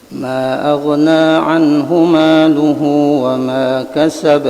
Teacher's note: Nah, itu Qalun aghna, mad jaiz munfasilnya dibaca dengan qasar, dua harakat ya